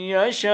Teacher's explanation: اگر ٹھہریں گے تو حمزے کو ریڈ نہیں کریں گے، صرف مد کر کے آپ نے چھوڑ دینا ہے